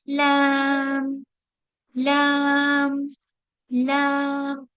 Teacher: लैम इसको ब बारीक पढ़ना है लाम लाम लाम ठीक है मसूड़ों में आप अपनी जुबान के नोक लगाएंगे तो ये आप लोगों का अदा हो जाएगा ठीक है लाम का मखर क्लियर है तो उसमें क्या होगा